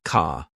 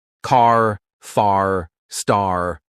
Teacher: British people say car like ca, but Americans, oh no, they stretch that R sound like this.